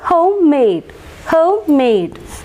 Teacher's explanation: both the syllables are stressed